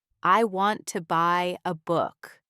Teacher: The stressed words are want, buy, book. The unstressed words are I, to, a. In fast speech, the unstressed words almost disappear.